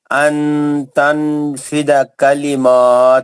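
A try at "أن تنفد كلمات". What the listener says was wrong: نہیں، انفیدہ نہیں ہے، فیدہ نہیں ہے،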